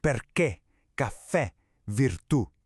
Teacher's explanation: See that? The emphasis is always on that last vowel, which means the accent is mandatory.